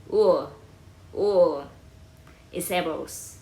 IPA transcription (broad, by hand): ʊə